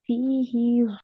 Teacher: فی ہی ہا کو لمبا نہیں کرنا، فا کے بعد تو یا ہے، ہا کے بعد یا نہیں ہے.